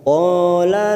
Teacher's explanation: Qala, fathah diikuti alif 2 harokat kita panjangkan.